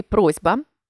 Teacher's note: у слові просьба пишеться літера с а вимовляється звук з